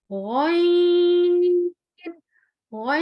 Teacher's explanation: غین جو ہے حلق کے سب سے اوپر والے حصے سے ادا ہوتا ہے